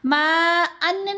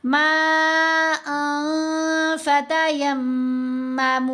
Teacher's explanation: अन्न में जो नून की आवाज़ है उसको नाक में छुपाना है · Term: इख्फ़ा